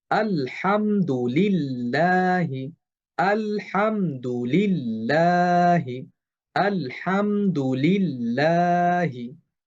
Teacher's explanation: লাফজুল জালালার শুরুতেই যে লামের নিচে জের আছে এর কারণে এই যে মধ্যবর্তী যে লামটা এটা পাতলা করে উচ্চারণ হবে